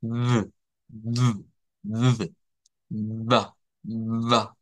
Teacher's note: Pero de acuerdo al fonema, el nombre de esa consonante debería ser fricativa labiodental vibrante o con voz.